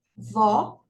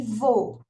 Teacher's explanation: Então, nós temos, por exemplo, vó, né? Como é o som aberto, ó, vó, som aberto, é com acento agudo. E vô, som fechado, né? Então, é com o acento circunflexo.